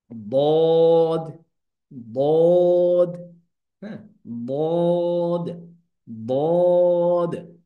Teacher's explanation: এটা যদি আমরা জিহ্বা ধরি আর এটা যদি ধরি মাড়ির দাঁত, তাহলে এরকম জিহ্বার গোড়া, জিহ্বার গোড়ার কিনারা এই মাড়ির দাঁতের গোড়ার সাথে লাগবে